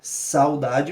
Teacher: Saudade, o que se destaca é o A e o U é uma semivogal sendo decrescente também.